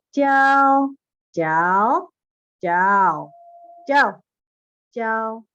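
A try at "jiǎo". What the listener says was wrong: Oke, nada tiga ya Bu ya. Nada tiganya belum ayun. Jiao.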